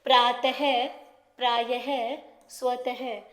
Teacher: जैसे प्रातः प्रायः स्वतःह यह कुछ हमें त की ध्वनि देता है और इसका उच्चारण हल्के ह की तरह किया जाता है। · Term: विसर्ग